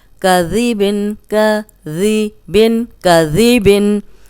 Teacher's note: ذال کو ہم نرم پڑھیں گے، اس میں سیٹی کی آواز نہیں آئے گی، اور اوپر سامنے کے جو دو دانت ہیں ان کے اندرونی کنارے پہ زبان رکھ کے ادا کریں گے تو سیٹی کی آواز نہیں آئے گی، ورنہ یہ زا بن جائے گا.